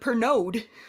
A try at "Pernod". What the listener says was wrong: The D is silent.